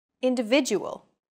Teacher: are stressed are valued greater than syllables that are unstressed individual the stressed syllable VI in individual is deemed more important so it's pronounced longer than all other syllables